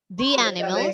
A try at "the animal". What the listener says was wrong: It is not the animals, the animal.